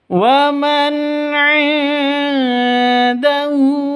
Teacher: nun mati bertemu dengan ain, jelas terang karena bacaan izhar halqi. Non matinya jelas, ainnya jelas, tidak boleh panjang.